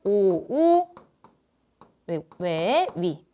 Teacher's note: 원순모음은 오나 우 소리를 갖고 있는 거잖아